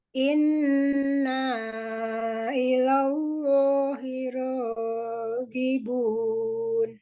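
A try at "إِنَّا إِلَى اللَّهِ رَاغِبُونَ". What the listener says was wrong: Panjangan ronya 2 harokat aja. Raghibun. Bunnya panjang.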